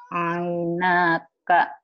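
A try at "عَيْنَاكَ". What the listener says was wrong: Pendek.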